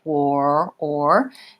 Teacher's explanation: thinking about moving from that rounded W shape, quar, or, and then pulling my tongue back for the or